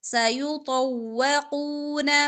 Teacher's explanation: تو اور قاف دونوں موٹے حروف میں سے موٹے پڑ جائیں گے سیطوقون ما بخلوا خا ہمارا ادنا حلق سے ادا ہوا خا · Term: قاف موٹا